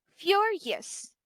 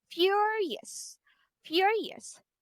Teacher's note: the primary stress is on the first first syllable